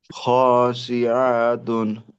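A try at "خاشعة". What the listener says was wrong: শিআতুন, এরকম হলে তো সবগুলো লম্বা হয়ে গেল। লম্বা কোথায় আছে? এখানে শুধু খাশিআতুন।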